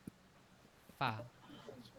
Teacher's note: নিচের ঠোটটা দুই দাঁতের সাথে লাগবে